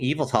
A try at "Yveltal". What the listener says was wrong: Eveltal? Yep, pronunciation on that second syllable.